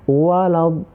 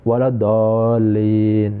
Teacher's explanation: ketika kita membaca dallin, itu lidah kita itu harus dibaca seolah-olah lidahnya itu berat ya.